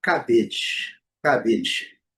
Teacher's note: Lembrando, primeira sílaba forte, o A com som de I e a letra E não é pronunciada.